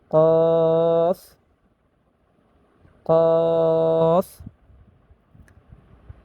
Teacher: কফ উচ্চারণ হয় 4 নাম্বার মাখরাজ থেকে। 4 নাম্বার মাখরাজ জিহ্বার গোড়া তার বরাবর উপরে তালুর সঙ্গে লাগাইয়া